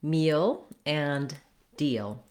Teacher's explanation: the dark L sound, which is the L at the ends of words in American English